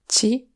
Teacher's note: comme dans ci (à toi), qui est bien prononcé [t͡ɕi] et pas [t͡si]